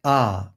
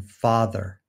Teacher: The low back lax unrounded vowel is ah, as in father.